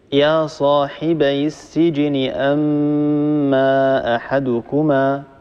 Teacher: نمد بمقدار حركتين أو أربعة لأن مد منفصل